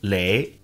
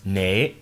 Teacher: the Cantonese audio recording sounded more like le with an initial L sound, rather than ne with an initial N sound